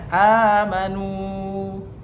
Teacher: Kemudian hukum tajwid yang kedua adalah amanu, di mana di situ adalah huruf alif amanu bertemu dengan tanda baca fathah yang berdiri atau alifnya ada dua, maka disebutlah dengan mat badal. Panjangnya adalah satu alif atau dua harokat.